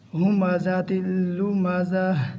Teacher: جب وقف کریں گے تو آخر میں ہا کی آواز آئی